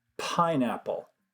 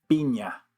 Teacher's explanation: the sounds in English tend to blow out more air, but in Spanish they don't